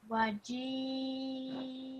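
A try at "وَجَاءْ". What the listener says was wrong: Did you pronounce the hamza in the end just a little bit? Okay, you should have done it because it this fatha, like we learned at the beginning, that turns into a sukoon. So you say waji.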